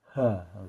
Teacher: Tenggorokan di bagian tengah sifatnya hams. Ada desis-nya ha gitu ya. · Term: huruf ha